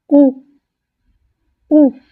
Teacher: Pour ce qui est du son OU, donc la bouche est très fermée, les lèvres arrondies, la langue en arrière et la langue ne touche pas les dents. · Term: le son OU